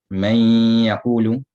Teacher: You're leaving out the pronunciation of the noon, but the sifa of the ghunna remains.